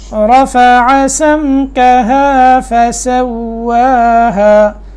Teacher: را موٹا حرف ہے، ٹھیک ہے، یہاں کیونکہ اس کے اوپر زبر ہے تو موٹا ہوگا